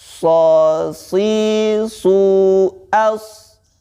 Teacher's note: Huruf shod letaknya itu dengan cara menempelkan ujung lidah kita, yaitu di dinding gigi seri bawah